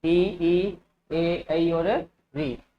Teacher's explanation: यानी इन पांचों का उच्चारण जीभ के अगले हिस्से से होता है। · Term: अग्र स्वर